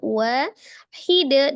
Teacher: karena dia termasuk huruf qalqalah, maka ketika dia waqaf disukunkan, dipantulkan